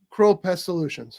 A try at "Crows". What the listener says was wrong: Crows. There's an S.